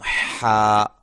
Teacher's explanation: ہا اس کو ہم حلق سے ادا کریں گے. حلق کا درمیانی حصہ یہ یہاں سے ادا ہوگا